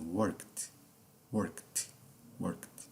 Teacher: O fonema da letra E passou ao largo, ou seja, foi ignorado, ok? Está aqui apenas a letra E como figura decorativa, tá bom?